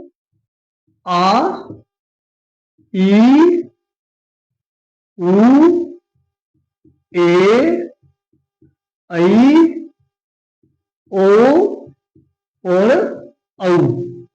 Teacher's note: बोलते समय थोड़ा सा ह्रस्व स्वरों की बजाय थोड़ा सा इनको लंबा खींचना है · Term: दीर्घ स्वर